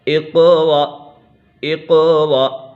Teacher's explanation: قاف پہ قلقلہ ہو رہا ہے اور یہ قاف حروف مستعلیہ میں سے بھی ہے